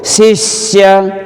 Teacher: शिष्य, सी के साथ में आधा स चिपक गया, यहाँ पर श का षटकोण वाले का द्वित हो गया। शिष्य, बलाघात हो गया सी के ऊपर, छोटी ह्रस्व मात्रा है ना